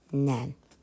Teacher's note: Axırıncı N samiti tələffüzdə artdığına görə dedik ki, bu sözdə səs artımı var.